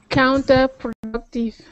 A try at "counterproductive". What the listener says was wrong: Yeah, it's sounding a little bit French on that productive. How do you say it? So counterproductive. Counterproductive.